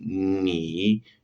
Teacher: Es similar a la N del español, pero tiene más resonancia en la nariz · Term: alveolar nasal